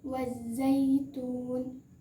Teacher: cara membacanya langsung diidghamkan ke dalam huruf za